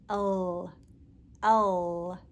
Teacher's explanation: to make the L sound, you push your tongue to the roof of your mouth behind your front teeth.